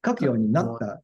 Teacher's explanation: you don't have to go up and down so much. Just the か only gets stressed.